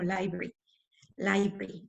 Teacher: Hay una sílaba completa que ya no se pronunció. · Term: omisiones